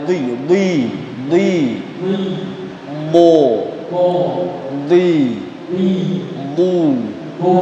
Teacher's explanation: tempat keluarnya Dod itu tepi lidah bagian belakangnya ditemukan dengan gigi geraham bagian atas